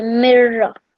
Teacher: You ignore it like that, cross on it, imaginary cross on it, and you go right from the letter before the noon sakin to the ra mushaddad